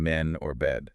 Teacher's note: The tongue position here is relatively flat, and the jaw is open about halfway. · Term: middle front vowel